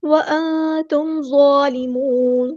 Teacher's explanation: میم ساکن پر یہاں پہ اظہار ہو رہا ہے، اظہار شفوی، تو ٹائم نہیں دیں گے